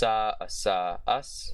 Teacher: the voiceless, alveolar, sibilant, fricative consonant